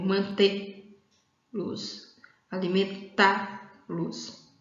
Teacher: a sílaba mais forte está na última sílaba aí do verbo